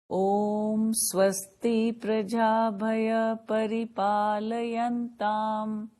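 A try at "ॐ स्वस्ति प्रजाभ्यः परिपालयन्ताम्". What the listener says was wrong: Not bhaya. Prajabhyah.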